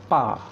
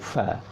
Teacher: bukan pa ya, tapi ada angin keluar sikit, fa. Ta'rifu fi panjangkan sikit, 2 harakat. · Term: huruf fa